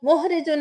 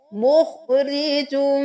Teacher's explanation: خا کو موٹا پڑھیں گے